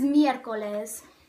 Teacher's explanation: this is miercoles counting from the last it has three syllables the oral stress is on the e of mircoles · The oral stress is on the E of miércoles, the first E.